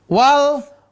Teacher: Wal, ujung lidah, langit-langit depan.